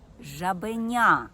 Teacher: я вимовляю вгучніше жаба тобто я роблю наголос на цьому складі у слові жабеня я гучніше вимовляю третій склад